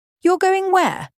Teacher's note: rise-fall intonation to show surprise.